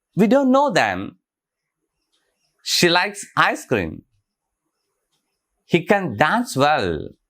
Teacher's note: pattern unstressed stress stress and unstress